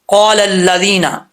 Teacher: رزقکم اللہ، آگے ہے قال الذین، قاف الف زبر قا، دو نقطوں والا قاف حروف مستعلیہ میں سے ہے، پر پڑھا جائے گا۔ الف سے پہلے زبر ہو تو الف مدہ ہوتا ہے، یہاں پر الف ہے، اس سے پہلے زبر ہے تو ایک الف کی مقدار اس کو لمبا کریں گے۔